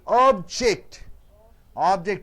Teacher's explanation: Object, 2 syllables, is a noun, so first syllable is stressed.